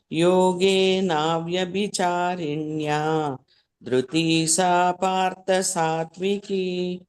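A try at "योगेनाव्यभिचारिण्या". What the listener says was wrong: ಯೋಗೇನಾವ್ಯಭಿಚಾರಿಣ್ಯ ಅದು ದೀರ್ಘ ಅವ್ಯಭಿಚಾರಿಣ್ಯ ಅಂತ ಕೇಳ್ಬೇಕದು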